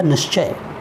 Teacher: विसर्ग तालव्य श में परिवर्तित हो गया, शब्द बन गया निश्चय।